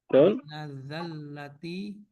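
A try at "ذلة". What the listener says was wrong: Zallah atau zillah? Ya, biar kita zillah, karena ada dalam Quran.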